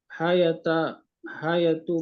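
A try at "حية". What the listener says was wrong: hayyata bitasdid. Hayyata dengan tasdid. Hayyata.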